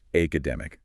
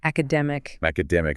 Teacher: the correct stress, the main emphasis should fall on the third syllable from the end. In this word, that's the dem part.